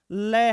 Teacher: दोनों तरफ से जीभ के दोनों तरफ से हवा निकलती है जीभ बीच में है इस तरफ से इस साइड से और इस साइड से हवा बाहर निकलेगी · ऐसा व्यंजन जिसके उच्चारण में जीभ के दोनों तरफ से दोनों ओर से हवा बाहर निकले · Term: पार्श्विक व्यंजन